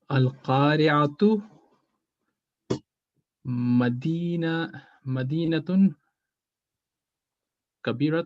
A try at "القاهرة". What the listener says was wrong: Al-Qahiratu is Cairo, the city of Cairo in Egypt, the capital of Egypt. I have to correct your pronunciation on that because you said Al-Qari'atu, which is the day of judgment. Al-Qari'ah. We run into some problems there if we say it's a big city. So Al-Qahiratu Madinatun Kabiratun.